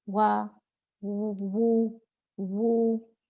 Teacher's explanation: واو مد جو ہے وہ ہونٹوں کو مضبوطی سے گول کر کے اور زبان کا پچھلا حصہ یعنی زبان کی جڑ اوپر اٹھانے سے ادا ہوتا ہے